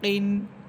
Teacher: জিহ্বার গোড়া থেকে একটু উপরে এসে উপরে তালুর সাথে লাগবে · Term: কাফ